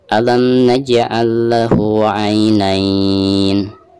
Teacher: Ketika diwakofkan di sini dihukumi mad lin atau mad lain ya, karena setelah harkat fathah ada ya sukun ya